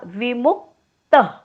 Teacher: विमुक्त आधी क चा उच्चार होतो आणि मग त चा उच्चार होतो. मूवर आघात, डोक्यावर हलंत क.